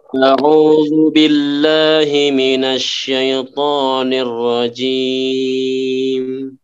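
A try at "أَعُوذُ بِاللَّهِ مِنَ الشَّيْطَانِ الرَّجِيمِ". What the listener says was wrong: A-nya kurang. Jadi A harus tetap jelas.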